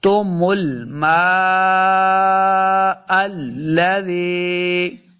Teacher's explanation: مد لام میم کے اوپر ہے تو ہم نے میم کو لمبا کر کے پڑھنا ہے